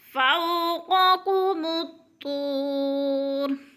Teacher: وولین ہے، وہ ساکن سے پہلے فا کے اوپر زبر ہے تو وولین کو لمبا بھی نہیں کرنا، جھٹکا بھی نہیں دینا